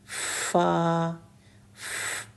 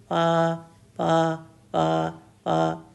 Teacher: پھر تیسرا لیٹر ہے فا. فا کے لیے اوپر والے 2 دانت نیچے والے ہونٹ کے اندرونی حصے کو لگتے ہیں اور ساؤنڈ آتی ہے فا.